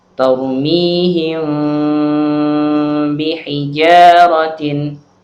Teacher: suara mim tersebut dibaca samar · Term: Ikhfa Syafawi